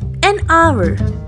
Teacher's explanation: Here in the word hour, H is silent and we don't pronounce it.